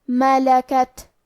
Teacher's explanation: آخری میں تا ساکن ہے، یہاں ہمیں تا کو ہمس سے پڑھنا ہے اور ہمس کا معنی ہے کہ حرف کی آواز ایسے کمزور ہو کہ اس میں پستی پائی جائے